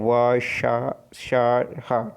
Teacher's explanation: इन व्यंजकों के उच्चारण में दो अंग जो है एक दूसरे से इतने निकट आ जाते हैं कि बीच में निकलने वाली वायु के लिए संघर्ष करती हुई निकलती है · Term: संघर्षी व्यंजन